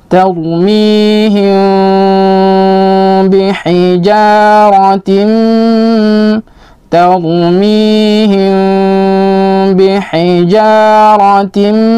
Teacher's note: kita dengungkan dengan tidak menutup bibir secara keseluruhan, tapi kita renggangkan, setidaknya kita renggangkan sehelai kertas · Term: ikhfa syafawi